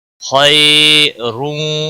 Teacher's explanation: خا حروف مستعلیہ میں سے پر پڑا جائے گا، یالین ہے تھوڑا نرمی کے ساتھ کھینچ کر پڑھیں گے